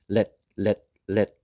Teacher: no air comes out at that T sound.